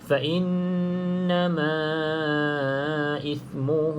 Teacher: pastikan nun bersabdu, cukupkan harakat, 2 harakat. Okay, dengung 2 harakat.